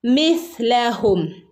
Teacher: സ പറയുമ്പം കാറ്റിങ്ങനെ പല്ലിൻ്റെ ഇടയിലൂടെ ഇങ്ങനെ പുറത്തേക്ക് പോകുന്ന രൂപത്തിൽ പറയണം